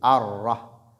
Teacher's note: Et elle porte un accent, une shadda, qui nous permet de mettre un peu de pression sur la lettre Ra. Et 2 frappes de la langue seulement, pas plus · Cette lettre Ra, qui vient après Lam, a un caractère qu'on appelle At-Tafkhim, Mufakhama. Donc, dans la version Hafs, quand Ra porte Fatha, elle est emphatique.